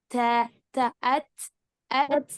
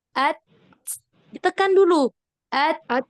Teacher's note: ta-nya itu, nafasnya itu agak kedengeran dan emang agak banyak lah.